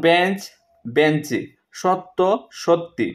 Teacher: শব্দের শেষে একটি অতিরিক্ত স্বরধ্বনি আসলে তাকে বলে অন্ত স্বরাগম।